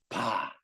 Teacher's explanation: 자, 비읍을 발을 발음하려고 할 때 발음 준비하면 두 입술을 다물고 있다가 바 하면서 터지면서 나죠. 막았다 빵. · 두 입술을 다 물었다가 터지면서 납니다. 자, 비읍을 발을 발음하려고 할 때 발음 준비하면 두 입술을 다물고 있다가 바 하면서 터지면서 나죠.